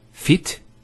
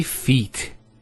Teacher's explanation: We don't say fit, we say feet. There's an elongation of the E sound.